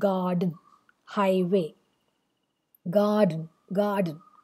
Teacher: You have first a stressed syllable and then an unstressed syllable. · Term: trochee